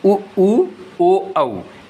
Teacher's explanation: इसके बाद ओष्ठों या मुख की आकृति के आधार पर गोलाकार और अवृत्ताकार ऐसे स्वर जिनका उच्चारण करते समय होठ गोल हो जाते हैं या वृत्त जैसी आकृति ग्रहण कर लेते हैं